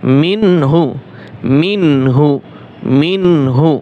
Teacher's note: গুণ্য করা যাবে না নুন সাকিনের পরে কি আসছে হা আসছে নুন ও পেশ নু এক আলিফ টান হবে পেশের বাম পাশে